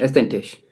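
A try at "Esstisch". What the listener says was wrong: estish, not essentish, estish.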